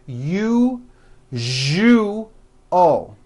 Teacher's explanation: that second syllable jus the one with the underline needs to be voiced put your hand on your throat and feel for the vibration